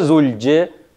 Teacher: если после звука «л» есть согласное «дже» или «че», которое смягчает звук «л». Да? Мягкий знак не пишем, но произносим мягко.